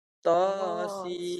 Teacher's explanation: Ta dua harakat dulu baru enam. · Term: enam harakat